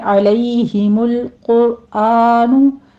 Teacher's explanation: عین کو وسط حلق سے ادا کیجیے، آگے لئی میں یا لین ہے، اور قرآن قوف کو پر پڑھیں گے، را بھی پر پڑھی جائے گی، لام الف مدہ۔